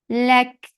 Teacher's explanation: Lak for fatha upon jaws, attach it kaf. Kaf will get sifa of hums, and hums is flow of breath.